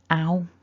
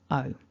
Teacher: So ow starts a little wider and o is a little more closed at the beginning. They're similar, which is one of the reasons that this causes some confusion for people. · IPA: /əʊ/